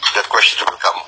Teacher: TH-nya sering diganti D.